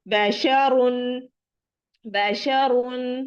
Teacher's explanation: जिस रॉ पर दो पेश हो वो रॉ मोटी पढ़ी जाएगी